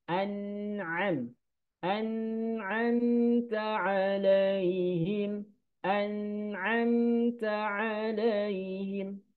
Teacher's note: An'amta alaihim. An, nun sukun dan mim sukun ada sifat tawasudnya, ada dengungnya sedikit ya